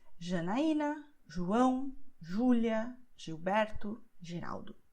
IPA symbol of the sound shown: ʒ